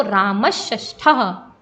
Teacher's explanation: ये वाला जो सा था दंतीय सा, ये मूर्धन्य सा में परिवर्तित हो गया